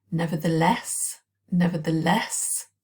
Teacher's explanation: stress on the last syllable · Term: word stress